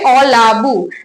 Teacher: অ কিন্তু আর পরিবর্তনের পরে থাকলো না প্রথম থেকে উঠে গেছে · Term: আদি স্বরলোপ